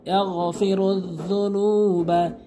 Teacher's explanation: গয়নের উচ্চারণ করবেন হলকের শেষ থেকে